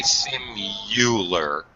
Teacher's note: some people say simular with like a Y sound